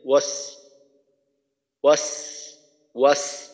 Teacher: তো এখানে ওয়াস সাইফ এইখানে একটু সমস্যা হয়, অর্থাৎ সদের উচ্চারণটা একটু পাতলা হওয়ার কারণে সিনের উচ্চারণের মতো শোনা যায়, ওয়াস ওয়াস ওয়াস, অর্থাৎ সদের তাসদিদের প্রথম উচ্চারণটা ওয়াস ওয়াস সইফ ওয়াস সইফ।